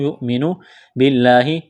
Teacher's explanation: حمزہ ساکن ہے تو یا کو حمزہ کے ساتھ ملائیں گے، جھٹکا دیں گے